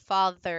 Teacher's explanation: you do have a fricative with father it's a voiced fricative